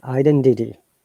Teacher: in American English, remember that The T they pronounce as D, which is called flap T, and R must be pronounced.